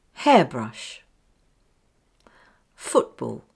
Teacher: The stress is fairly equally balanced, but with stronger stress on the first part